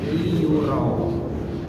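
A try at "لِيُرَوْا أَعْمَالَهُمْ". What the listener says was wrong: Ro sama waw kan? Raw. Ini hurufnya kembali ke ro lagi, bukan raw. Raw. Liyuraw a'malahum. Nah, kalau tadi namanya liyura. Nah, itu enggak ada huruf ra itu karena fathah ya dikira. Tapi kembali ke huruf aslinya ada roriru.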